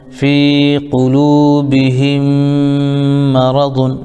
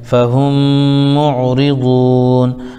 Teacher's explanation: یہاں پہ میم ساکن کے بعد میم آیا اس لیے ادغام شفوی ہو جائے گا، یعنی میم کو میم سے ملا دیں گے